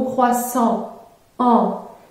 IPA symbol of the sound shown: ɑ̃